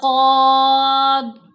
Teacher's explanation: ضاد کو موٹا پڑھنا ہے لیکن قاض یہ ہلانا نہیں